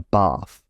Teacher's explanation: If you are from the south, you take a bath. You use a long vowel. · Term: trap bath split